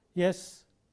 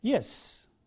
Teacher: It should be with a good falling tone, yes or no.